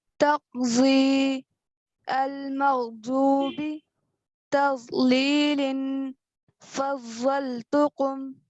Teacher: अब दौद का मखरज है कि जबान के किनारे यानी जबान की दोनों साइड्स को दाएं या बाएं ऊपर के दाढ़ों की जड़ पर लगाने से दौद का मखरज अदा होता है